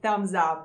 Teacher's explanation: So it's not thumb, no, it's thumb. And since the m is a voiced consonant, at the end you have a z sound, not s.